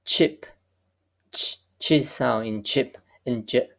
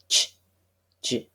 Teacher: we have a stop and then we have a fricative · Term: affricate